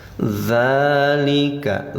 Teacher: za patah berdiri panjang 2 harokat namanya mad tabi'i atau mad asli